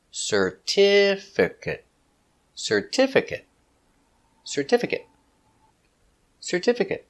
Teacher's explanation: Four syllables. Stress the second syllable.